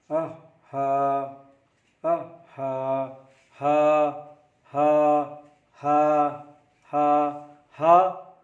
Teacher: कंठ नाली यानी गला के नीचे वाले हिस्से यानी भाग से उच्चारण होता है।